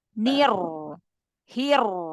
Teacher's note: yuk ulang Bismillahirrahmanirrahim He gitu Gu Jadi dari nir langsung tebal Nir nya tipis tapi langsung rnya tebal